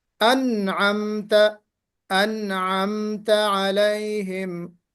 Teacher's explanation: انعمت نون کے اوپر جو قلقلہ کیا نا آپ نے، ویبریٹ نہیں ہونی چاہیے آپ کی آواز